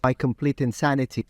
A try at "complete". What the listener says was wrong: Have a listen to the T in the word complete. Complete. He's got this dental T again. Which for that variety of English where he...